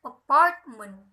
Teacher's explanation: primary stress is on the second syllable and all other syllables are unstressed